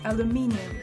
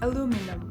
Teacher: American English has 3 syllables with the emphasis on the second, so it's aluminum. · British English has 4 syllables with the emphasis on the third